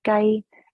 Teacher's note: So the next one is our gai, first tone, high tone, gai, and that means chicken.